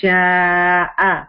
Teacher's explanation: اور شاء کو 5 حرکت اسٹریچ کیا